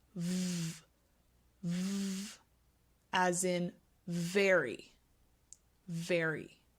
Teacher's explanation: is you combine Bine your teeth with your bottom lip and you will feel voicing here in your throat so it sounds like v v as in very very in